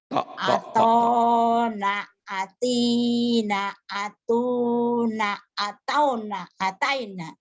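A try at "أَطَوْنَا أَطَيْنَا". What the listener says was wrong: Atoina, bukan ataina, salah. Atoina, atoina, atoina. Atauna, atoina, to huruf to semua ini mah huruf o, huruf Jawa. Atona, atina, atauna, atoina.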